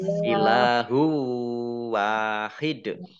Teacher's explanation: Kemudian dalnya dibaca sukun sehingga ini dibaca kolkolah atau memantul.